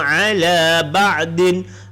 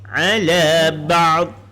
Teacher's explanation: Ala ba'din bila berhenti jadi ala ba'd